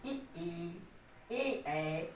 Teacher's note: जिसमें आपके जिह्वा आगे की तरफ, दांत की तरफ थोड़ी आए, वो अग्रस्वर हो जाएगा।